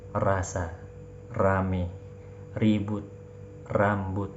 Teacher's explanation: R di dalam bahasa Indonesia itu lebih jelas terasa, rasa, rame, ribut, rambut, ya. Getarannya lebih banyak dan lebih jelas, r. Tapi kalau ro bahasa Arab getarannya lebih, ya, bergetar tidak terlalu, ya, jelas terdengar, getarannya pun tidak terlalu, ya, jauh, ya.